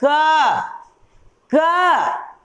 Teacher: ओठ से, नाक से, दांत से नहीं, ये बोल रहे हैं क, गले से बोल रहे हैं। तो क का उच्चारण स्थान मेरा हो गया ये हो गया कंठ